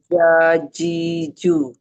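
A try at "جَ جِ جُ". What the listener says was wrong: Nah, ja-nya dapat, J-nya mulai ada C lagi. Coba baca yang ini nih. Aje, uje. Nah, ya, pokoknya bisa dirasain sendiri. Ketara kalau misalnya masih ada C-nya, belum hilang. Tenggela, coba. Jaji.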